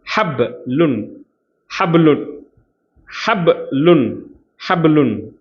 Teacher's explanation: ஹப் கல்கலாவுடைய எழுத்து. அப்போ பால அசைவு ஏற்படும்.